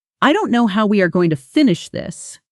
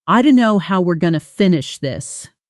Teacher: at natural native speed, going to collapses into gonna, and where blends into the next word, almost like one syllable.